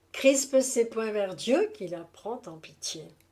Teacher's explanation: un accent d'attaque initial sur Chris et un accent minimal obligatoire en fin des mystif sur Dieu